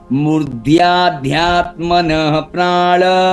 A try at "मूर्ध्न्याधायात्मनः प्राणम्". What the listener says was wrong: मूर्धन्या आधा न और य में आया न्या हाँ मूर्धन्याध्यात्मनः प्राण